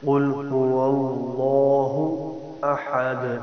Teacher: دال حرف قلقلہ میں سے قلقلہ کرنا، آواز کو ڈبل کرنا ہے